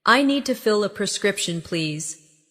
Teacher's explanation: Stress prescription. So, it's clear.